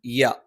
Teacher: യ നാവിന്റെ മധ്യഭാഗം മേലെ അണ്ണാക്കിലാണ്.